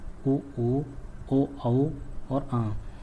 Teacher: इनके उच्चारण में होठ गोलाकार या वृत्ताकार हो जाते हैं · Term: व्रतमुखी